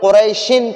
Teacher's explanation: اگر ٹھہرتے نہیں ہیں، وقف نہیں کرتے ہیں تو پھر قریشن پڑھیں گے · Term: تنوین